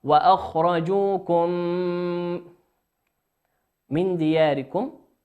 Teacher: النون ساكنة أتى بعد حرف الدال، والدال من حروف الإخفاء